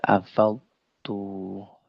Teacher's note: Jadi dhad harus jelas, ta juga harus jelas. Dhad itu jelas secara tebal dan dia kuat. Ta, ya, secara tipis dan dia juga apa namanya, huruf hams